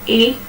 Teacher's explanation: It's a very short glide. From just below half close to just above half close.